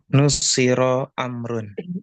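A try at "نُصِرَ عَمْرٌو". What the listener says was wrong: Bagus sekali. Nusiru Amrun.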